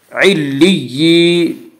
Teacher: تشدید کے بعد تشدید ہے، اس لیے تشدید والے حرف کو ایک دوسرے سے ملا کر پڑھیں گے، علی یا زیر ی، یا ساکن سے پہلے زیر ہے، یا مدہ ہوا، اس لیے یا مدہ کو ایک الف کے برابر کھینچ کر پڑھیں گے